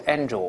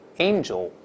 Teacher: ▁angel-like▁girl，▁天使。注意这个发音，不要读▁angel，▁ 这个字母▁a▁发双音▁a▁这个声音，再加鼻音